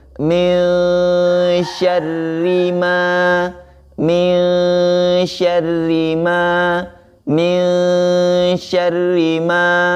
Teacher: Ma-nya di situ ada tanda alif atau ada huruf alif, maka di situ ma-nya dibaca 2 harokat. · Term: mad tabi'i